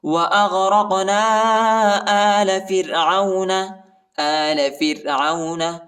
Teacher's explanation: قاف کو جھٹکا دینا ہے، اور الف پر جو ہے چھوٹا مد آئے، اس کو تقریباً 2-3 سیکنڈ تک کھینچنا ہے